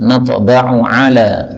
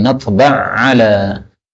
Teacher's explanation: ain ketemu ain, boleh idgham sebagaimana biasa menjadi natba' ala.